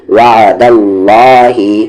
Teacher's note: یہ اللہ کا لام ہیوی ہوگا کیونکہ اس سے پہلے زبر ہے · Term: لام جلالہ